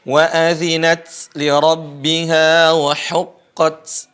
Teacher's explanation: syidah itu terputusnya suara ta kemudian mengalirnya napas setelahnya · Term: syiddah